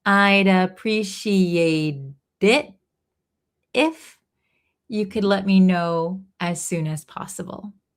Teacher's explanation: I'd appreciate, here it links, I'd appreciate it, So this T in appreciate is going to be a flap T, sounds like a D